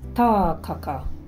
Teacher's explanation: Say Tākaka with a long vowel in the first A